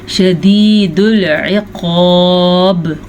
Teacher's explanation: قاف ہمیشہ ہی موٹا پڑھا جاتا ہے اور وقف کی وجہ سے با پہ کلکلا ہوگا، با کو ساکن کرنے کی وجہ سے